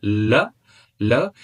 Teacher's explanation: Out of the rest four sounds, we have one lateral approximant, l, l, lateral approximant in manner of articulation, and this is alveolar in the place of articulation